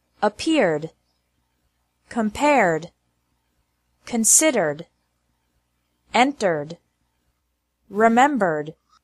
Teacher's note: Ed is pronounced like d with no extra syllable after verbs ending with an R sound